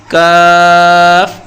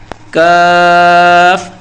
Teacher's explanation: اس کے اندر ایک باریک سی کلفی بنی ہوتی ہے، یہ قاف کی طرح موٹا نہیں ہے، اسے بالکل باریک اور سادہ پڑھنا ہے۔ زبان کی جڑ کو تالوں کے سخت حصے سے لگائیں گے اور بولیں گے کاف۔ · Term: باریک کاف